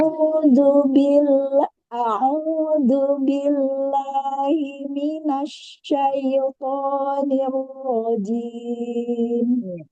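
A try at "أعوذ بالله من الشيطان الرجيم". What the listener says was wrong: Di istiazahnya, di Hamzah sama ke ain ini masih terlalu banyak. A'udzu. A'udzu. Jadi, perpindahan antara hamzah ke ain itu tidak terlalu lama ya. Cepat.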